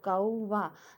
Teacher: कौवा में व का उच्चारण स्वर उ की तरह काम कर रहा है। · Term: अर्ध स्वर